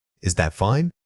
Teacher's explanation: if the tone rises at the end on fine, it means you are actually questioning whether the situation is acceptable or appropriate.